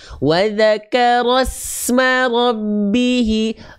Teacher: Ya, jadi dia harus terus mengalir. Berdesisnya ketika sukun sin itu harus terus mengalir.